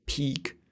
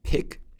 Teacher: This is peak with a long E, and this is pick with a short I.